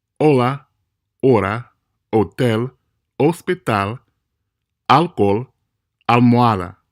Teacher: Notice that you didn't hear an H sound in any of those words. Again, the H is silent in Spanish, except when it combines with the letter C to form a CH sound.